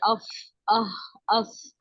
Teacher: ये फा हा सा इन सब में सांस चलती ही है, रुकती तो किसी में भी नहीं है